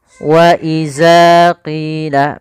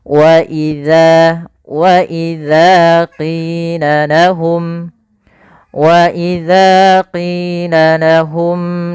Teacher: Pada lafal wa idza, hati-hati dalam pelafalan huruf zal, jangan sampai kita merubahnya menjadi huruf zai